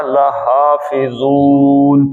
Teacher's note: لیکن نون کو عارضی طور پہ ساکن کر دیا، لحافظون، پانچ حرکتیں کھینچ لیں اس کو آپ